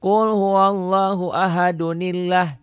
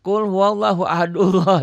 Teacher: seakan-akan ada Nun kecil ada Nun iwad